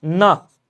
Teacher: जीवा की नोक जब ऊपर के दांतों की पंक्ति के सामने वाले दांत के ऊपर हिस्से के संपर्क में आकर वायु के प्रवाह को अवरुद्ध करती है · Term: वत्सर्य वर्ण